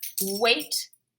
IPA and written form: weɪt (Wait)